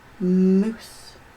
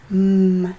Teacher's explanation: The lips are closed. There's a vibration in the throat. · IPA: /m/